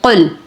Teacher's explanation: قاف کو پر کریں گے، لام کو ساکن کریں گے اور ہونٹوں کو گول کر کے ادا کریں گے